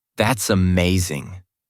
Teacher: When they are excited, they might say, That's amazing, with rising enthusiastic tones.